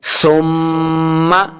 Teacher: سا کو نرمی کے ساتھ پڑھیں گے، سیٹی کی آواز نہیں آنی چاہیے